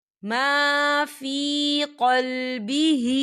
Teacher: یا ساکن سے پہلے زیر ہے تو اسے بھی ہم دو حرکت کی برابر کھینچ کے پڑھیں گے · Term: یا مدہ